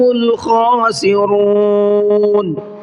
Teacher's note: خاسرون کے اندر خا کو حلق سے نکال کر کے پڑھنا ہے